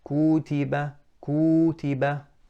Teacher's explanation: I extended the dhamma on the kaf, you can tell now, no, that dhamma was too long.